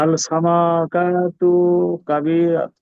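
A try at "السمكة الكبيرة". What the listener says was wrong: আস-সামাকাতুল কাবীরা। আস-সামাকাতুল তা লামের সাথে জয়েন হবে। আস-সামাকাতুল কাবীরা অথবা আস-সামাকাতুল কাবীরা। আস-সামাকাতুল কাবীরা। আস-সামাকাতুল কাবীরা। আস-সামাকাতুল কাবীরা। আস-সামাকাতুল কাবীরা।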